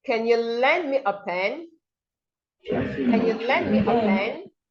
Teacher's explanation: So you see your voice goes up because you are asking a yes or a no question. So the person, your listener, can say, yes, I can, no, I cannot. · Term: rising intonation